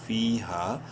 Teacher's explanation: فا یا زیر فی، ہا الف زبر ہا، دونوں کو ایک الف برابر لمبا کریں گے، یعنی یا مدہ کی وجہ سے فا کو اور الف مدہ کی وجہ سے ہا کو